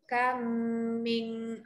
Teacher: Yang pertama kam, rapat bibir sebab bunyi mim yang kedua. · Bunyi mim pertama tu dah masuk kepada bunyi mim yang kedua. Jadi bacalah panjang untuk dengung.